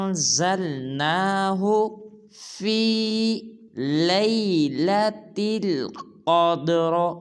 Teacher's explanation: جب حمزہ کو نون ساکن کے ساتھ ملائیں گے تو اخفا کریں گے